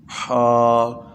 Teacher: تو حا جو ہے اس کو حلق سے ادا کرنا ہے